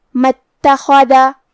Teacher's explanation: خا کی ادائیگی حلق کے اوپر والی حصے سے ہے اور کیونکہ خا حروف التفخیم میں سے ہے تو ہم یہ حرف کو بھاری آواز میں پڑھیں گے. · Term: حرف الخا